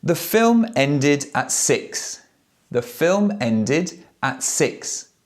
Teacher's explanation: And the last verb, end, the ED sounds like id, ended.